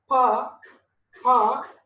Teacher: Okay, when you say pa, pa, the lips are released suddenly